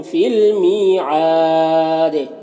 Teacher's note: فی المیعاد می میں یا مدہ ہے، 1 الف کے برابر کھینچیں گے اور عین میں کھڑا زبر ہے. اگر یہاں پر وقف کریں گے تو دال کا زیر سکون سے بدل جائے گا تو مد عارض وقفی ہوگا اور دال میں قلقلہ ہوگا. اور اگر یہاں پر وقف نہیں کریں گے تو دال میں قلقلہ بھی نہیں ہوگا اور مد عارض وقفی بھی نہیں ہوگا.